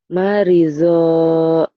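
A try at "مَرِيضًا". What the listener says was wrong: marido panjang atuh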